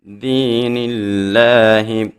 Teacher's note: لفظ اللہ سے پہلے حرف کے نیچے جب زیر آ جائے تو لفظ اللہ کو بھی باریک پڑھا جاتا ہے